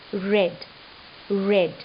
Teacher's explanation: Tip of the tongue has to contact the middle of the alveolar ridge. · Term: liquids